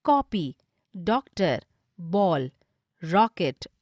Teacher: उदाहरण के लिए कॉपी, डॉक्टर, बॉल, रॉकेट आदि में न तो आ ध्वनि है और न ओ, बल्कि इनके बीच की ध्वनि है। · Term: आगत ध्वनि